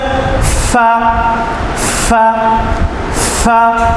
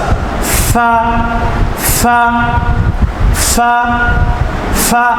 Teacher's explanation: সঠিক উচ্চারণটা হচ্ছে ফা ফা ফা বাতাস বের হবে বাতাস